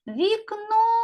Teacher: куди падає наголос на другий склад А тепер робимо звукову модель слова вікно в приголосний м'який позначаємо